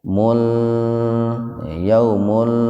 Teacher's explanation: Domatain ketemu dengan lam, jadi dibacanya dimasukkan ke lam tanpa mendengung. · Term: idgham bila guna